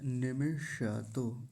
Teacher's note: निमिषतो, न पर छोटी ई की मात्रा और म पर भी छोटी ई की मात्रा है, तो जल्दी बोलेंगे निमि। और सबसे मुख्य बात है, मूर्धन्य शकार को पूरा बोलेंगे